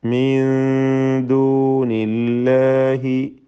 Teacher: സക്കിന നൂനിനെ ഇഖ്ഫ ഹഖീഖി നൽകി മറച്ചു മണിച്ച് ഓതുക